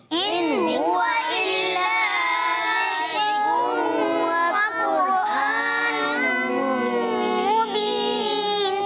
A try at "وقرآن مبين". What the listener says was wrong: اچھا مجھے ایسا محسوس ہوا وقرآن ہم پڑھ رہے ہیں بس. وقر قاف کو کیا کریں گے؟ جی پر پڑھیں گے. وقرآن مبین.